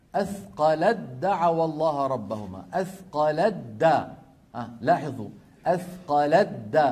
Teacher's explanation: الأمر الثالث، الثاء في الدال، الثاء في الدال، أثقلت دعوى الله ربهما، أثقلت دا، لاحظوا أثقلت دا، ما بقي تاء لأن التاء والدال من المخرج ذاته، ففي الوصل النطق يكون بدال مشددة